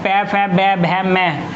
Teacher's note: जो हमारे पै वर्ग है, पै, फै, बै, भै, मै, ये हमारे ओष्ठ से बोले जाते हैं, ओष्ठ, ओष्ठ्य, ओष्ठ्य, ओष्ठ, ओष्ठ, ओष्ठ के आधार पर।